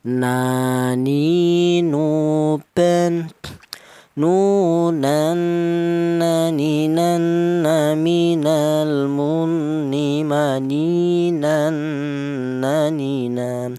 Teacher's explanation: Huruf nun ini keluarnya huruf berasal dari nun, dari ujung lidah menyentuh langit-langit mulut